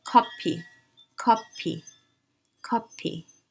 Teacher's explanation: at the end so k e k coffee becomes copy copy we cannot do f there is no f sound in korean so the closest approximation is pu